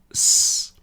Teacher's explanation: So the first one s that noise is made in my mouth. There is nothing happening in my throat.